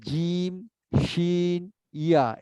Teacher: জিহ্বার মাঝামাঝি উপরে তালুতে লাগিয়ে বলতে হবে